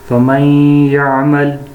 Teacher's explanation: اس لفظ میں نون ساکن کے بعد یا آیا ہے، یعنی یہ نون ساکن ہے اس کے بعد کیا ہے، یا ہے، تو اس لیے غنہ کے ساتھ ادغام کیا جائے گا